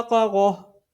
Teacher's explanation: یہ والا تا وقف کی صورت میں ہا ساکن سے تبدیل ہو جاتا ہے